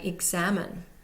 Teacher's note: in examine, whatever way you pronounce it, we see the primary stress on the second syllable.